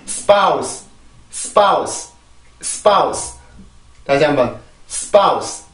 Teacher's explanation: 무슨 얘기냐면 S 다음에 나오는 세 가지 폐쇄음들은 특히 무성음 폐쇄음 세 개는 항상 소리가 된 소리로 바뀌게 돼요. 무슨 얘기냐면 SP, ST, SK 이 세 가지 발음이 요렇게 형식으로 오게 되면 요 원래 소리를 잃어버리고 된소리 현식으로 바뀌게 됩니다.